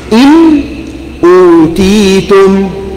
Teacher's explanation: you need to clear the noon from ghunna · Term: idhar